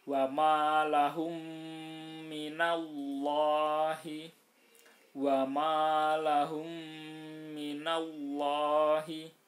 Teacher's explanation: Jadi mem yang pertama dimasukkan ke mem yang kedua, atau lebih mudahnya adalah ditasdidkan. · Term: idgham mimi